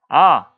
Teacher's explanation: 아, 최고로 많이 벌어집니다. 얘는 저모음이에요.